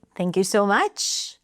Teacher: Notice how she lifts the pitch at the end. And a lot of times that indicates this kind of friendliness, or I'm not threatening here by raising my pitch.